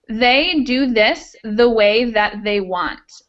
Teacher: the voiced TH sound, which is where it's the same sound but with vocal cords